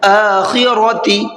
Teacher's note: حمزہ کو کھینچ کر کے پڑھنا ہے اور را کو پر کر کے پڑھنا ہے۔